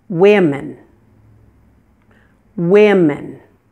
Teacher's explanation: the O is pronounced as a short, relaxed I sound. It's the same I as in the words it, will, and wind.